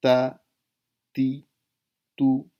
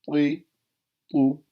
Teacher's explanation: تا باریک پڑھیں گے، طا موٹا اور پر پڑھیں گے، منہ بھر کے پڑھیں گے